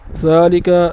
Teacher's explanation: ذال کے اوپر کڑا ہے، کڑے کی مقدار یہ ہے کہ ایک الف کی مقدار اسے کھینچنا ہے